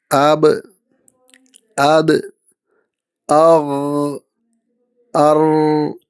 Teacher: കൈ വായിന് മുന്നിൽ വെച്ച് പറയുക ആബ് അത് അർ ഇവിടെ കാറ്റ് ഇല്ല ശബ്ദം മാത്രം വ്യക്തമാണ് ഇത് ജഹ്റാണ്